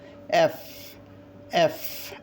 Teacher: এফ, এটা আমরা ফয়ের মতো উচ্চারণ করছি, আসলে এটা ফয়ের মতো উচ্চারণ হবে না, এটা হবে কি এফ। এফ অর্থাৎ উপরের দাঁত এবং নিচের ঠোঁট একখানে করে মাঝখান দিয়ে একটা বাতাস বের হবে